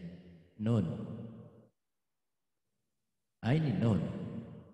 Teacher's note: punggung ujung lidah bertemu gusi